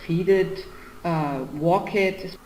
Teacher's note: hear the rising intonation because she's listing